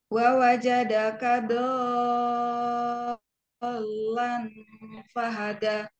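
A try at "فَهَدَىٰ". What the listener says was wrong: Da-nya kurang panjang. Fahada da.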